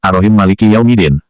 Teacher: huruf mim maliki ditasydid setelah mim yang pertama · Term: idgham